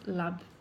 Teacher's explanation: love often becomes lab, because they try to place the V with a B sound